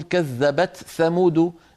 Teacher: قبيلة تقول كذبت ثمود بإظهار التاء عند الثاء